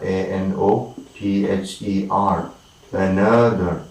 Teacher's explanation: Another, right, another, A-N-O-T-H-E-R, another, another, all right, very silent, another, and the primary stress is falling on the second one, another.